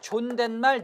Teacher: 혼잣말, 존댓말은 니은을 첨가시켜서 발음한 것입니다. 발음 습관에 따라 달라지는 것이지 이건 규칙적인 현상이 아니에요. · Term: 니은 첨가